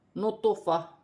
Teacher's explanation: تو جو ہے حروف قلقلہ میں سے ہے، ساکن ہے یہاں، تو قلقلہ کے ساتھ پڑھا جائے گا